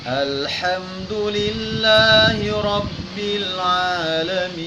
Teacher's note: Jangan ada suara e-nya. Matikan betul-betul dengan menampakkan sifat huruf lam itu namanya tawassut. Artinya suara yang tidak tertahan dan tidak terlepas. Jangan al tertahan dan bukan terlepas.